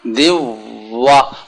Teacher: دوا ہونٹ گول ہوں واو کی ادائیگی میں